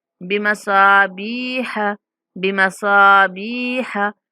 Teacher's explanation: स्वाद के बाद अलिफ मद्दा है और बा के बाद या मद्दा है, दोनों को थोड़ा खींच के पढ़ेंगे